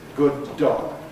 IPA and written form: ˌgʊd̚ ˈdɔg (good dog)